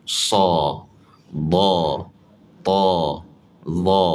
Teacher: Ha dah angkat pangkal lidah ada pula sifat itbaqa. Jadi kena angkat juga tengah lidah. Ha jadi kedua-dua bahagian belakang tu bel pangkal dan juga tengah lidah diangkat maka bunyi huruf tersebut akan jadi sangat tebal. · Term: huruf yang paling tebal